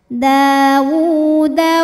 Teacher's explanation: Tapi kalau diteruskan atau diwasolkan, waw ini mad tabi'i muqaddar. Karena wawnya berharokat dhammah terbalik, maka bacanya hanya boleh 2 harokat saja kalau diwasolkan.